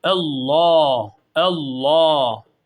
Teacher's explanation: önceki harfin harekesi üstün olduğu için buradaki iç kırmızı şeyin içerisindeki Allah lafzı kalın okunacak arkadaşlar